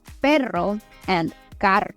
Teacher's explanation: the tip of my tongue is in the roof of my mouth, but then also the sides of my tongue are touching my teeth on the side. And that kind of keeps my tongue stable. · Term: rolling R sounds